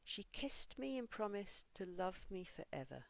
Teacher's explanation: pronouncing the ed ending for words that end in unvoiced sounds. This kind of words have a t sound if there's an ed ending.